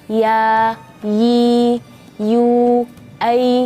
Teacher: keluarnya dari bagian tengah-tengah lidah dan langit-langit jadi Keluarnya lembut ya dan sifatnya lidah kita itu harus datar